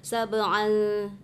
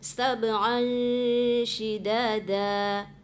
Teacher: Ikhfanya itu mengikuti huruf yang di depannya. Huruf depannya kan huruf sya.